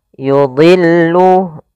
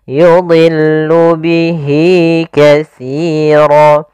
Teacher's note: dha di sini huruf isti'la termasuk huruf tafkhim, maka dia tetap ditebalkan, bukan yudillu tapi yudillu.